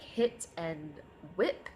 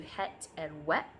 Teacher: it'll be a lower vowel preferred over a higher vowel